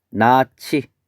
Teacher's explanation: 예사소리와 히읗이 만나 거센소리가 되는 현상